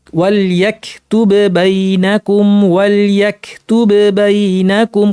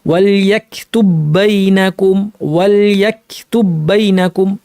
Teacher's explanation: কিন্তু ইদগাম করেছি, এখন আর প্রথম বায়ের অস্তিত্ব নাই, তাসদিদযুক্ত একটাই বা, আর তাসদিদযুক্ত একটাই বা থাকলে কলকলা হবে না।